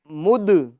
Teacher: اس میں بھی قلقلہ کریں گے کیونکہ دال حروف قلقلہ میں سے ہے